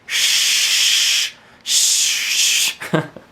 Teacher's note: So it's in between your palate and your alveolar ridge. So it's like going shh, and then taking your tongue back just a little bit and going shh, shh. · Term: alveolar palatal